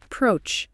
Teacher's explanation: Two syllables with the stress on the second syllable.